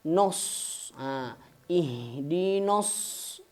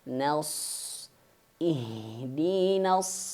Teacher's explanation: Bukan nos tapi na dulu mulutnya dibuka dulu baru shad digembekin.